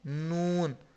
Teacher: نون بولتے ہیں تو ناک کے بانسا میں آواز جاتی ہے، اور ہونٹ تھوڑے سے گول ہو جاتے ہیں، نون۔ زبان یہاں پہ ٹکراتی ہے، نون، یہاں پہ مسلسل ٹکراتی ہے، ہونٹ تھوڑے سے گول ہو جاتے ہیں، اور آواز یہاں ناک میں جاتی ہے تو نون ادا ہوتا ہے۔